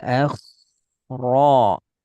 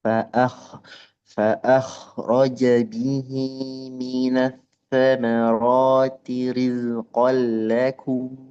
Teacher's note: Lebih tebal kha sukun karena diawali fathah.